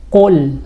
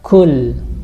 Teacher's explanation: dia ada di dari lidah paling belakang muncul suaranya qo kalau ka itu agak naik dikit ya masih di bagian belakang lidah tapi agak maju dikit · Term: makhraj huruf qo